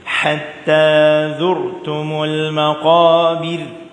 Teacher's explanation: Ha ni nipis pula. Yang zur tafkhim.